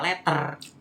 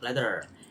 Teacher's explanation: dua kata t dan diucapkan sebagai Flap atau R Jadi t-nya itu dibaca sebagai R jadi menjadi yang kalau kita